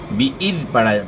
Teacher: نیچے والے دانتوں کے ساتھ زبان ٹچ نہ ہو، ورنہ زا کی آواز ہو جائے گی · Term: ذال